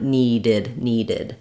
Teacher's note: we actually say ID the I and D sound for that past tense and that's when the um verb ends with the t or d sounds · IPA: /ɪd/